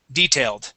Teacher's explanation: detailed stressed at the beginning